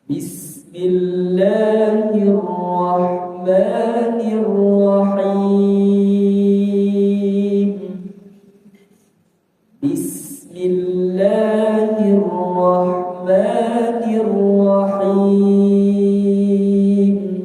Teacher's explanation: Jadi kalau Bapak Ibu-ibu mendengarkan murattab imam Masjidil Haram, Masjid Nabawi ya itu panjang pada lafzul jalalah ya. Bismillah la itu dua harakat kemudian ma dua harakat. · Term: mad thabi'i